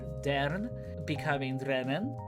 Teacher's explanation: dern, meaning to be, is irregular namely due to the metathesis, or the switching of sounds. You notice how dern is the normal dictionary form, whereas drennen is the dictionary form for the negative.